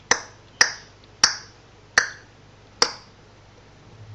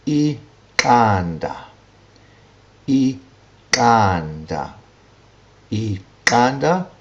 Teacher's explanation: And the third click is the Q, which is a palatal click. It's articulated on the palate